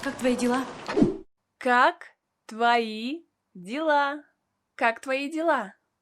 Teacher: a vowel o is pronounced as a in the word твои because it is not stressed